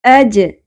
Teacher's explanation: جیم ساکن پہ قلقلہ ہوگا